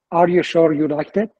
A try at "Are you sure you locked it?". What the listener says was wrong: آر هاتون رو ایرانیز تلفظ میکنین، زبون نزدیک سقف دهان وقتی میخواید بگید آر. Locked it نه، locked it. آر هاتون رو باید کار کنید. ایرانیزه داریم.